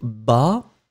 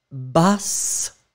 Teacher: So masculine form ba, and the feminine form, you double the S, so you will get bas. You really hear the S that is quite strong in that case.